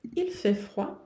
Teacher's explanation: Aqui o T do fait não se pronuncia, o D do froid não se pronuncia.